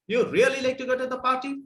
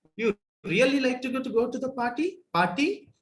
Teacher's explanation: The final syllable generally gets tonic accent of rising tone. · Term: influence of Telugu